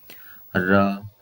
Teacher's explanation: र बोलते हुए जहां पे हमारी जीभ टच हो रही है र, तो वो जो हिस्सा है वो मूर्धा कहलाता है